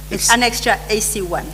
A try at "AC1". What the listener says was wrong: Later on, you said when you read AC1, it sounds like 81.